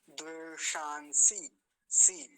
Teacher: सबसे पहले मूर्धन्य सकार है फिर दंती सकार है इन दोनों में भेद करने में बाधा होने के चांस बने